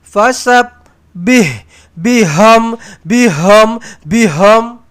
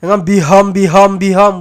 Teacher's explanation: 2 kali ha pedas. Fasabbih, biham. Dua-dua ha pedas. Jangan baca ha simpul.